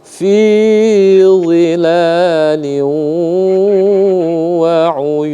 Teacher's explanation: Fi zilalin wa, di sana ada lam yang berharakat kasratain bertemu dengan huruf wa, maka dibaca liwa. Jadi idgham bi gunnah ya, idgham bi gunnah, maka didengungkan, ditahan selama 2 harakat.